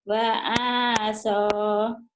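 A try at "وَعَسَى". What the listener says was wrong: wa'asa. Sayang panjang pendeknya nih harus bagus.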